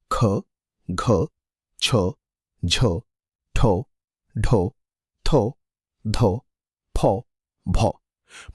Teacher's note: जिन वर्णों के उच्चारण में अधिक श्वास वायु बाहर निकलती है वे महाप्राण कहलाते हैं।